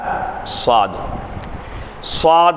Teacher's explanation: வாயை குவிழ்த்து சப்தத்தை ஒரு பக்கம் ஒதுக்கி அந்த உச்சரிப்பை நம்ம வெளிப்படுத்தணும் ஸ்வாத் முடியும் போது தாலுடைய உச்சரிப்பில் தான் ஸ்வாது முடியும் பாருங்க சுவாது இல்ல